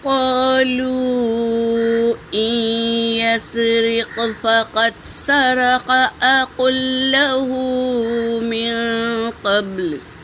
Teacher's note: نون پر سکون ہے اور یا پر تشدید ہے، تو ہم نون کو نہیں پڑھیں گے بلکہ حمزہ کو یا میں ملائیں گے۔